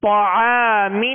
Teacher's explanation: تو کو پر کریں گے، عین باریک ہے، عین کے ساتھ الف ہے، عین کی وجہ سے الف بھی باریک پڑھیں گے